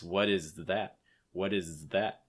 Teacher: hold the z sound long enough before the th